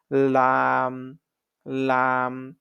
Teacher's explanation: জিহ্বার আগের কিনারা সামনের উপরের দাঁতের মাড়ির সঙ্গে লাগাইয়া